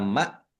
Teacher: Anar alif lam syamsiyah karena tidak dibaca langsung masuk ke huruf berikutnya yaitu nun. Ditandai nunnya ada tasdidnya.